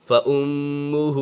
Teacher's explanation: میم مشدد میں ہمیشہ غنہ ہوتا ہے.